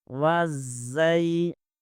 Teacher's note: زا زبر کے آگے یائے ساکن آ رہا ہے، یہاں پر یائے لین ہوگا